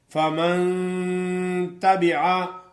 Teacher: نون پہ غنہ کریں گے اخفا